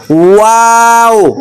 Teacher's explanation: ওয়াও এর উচ্চারণ দুই ঠোঁট গোল করে খালি জায়গার থেকে উচ্চারণ হবে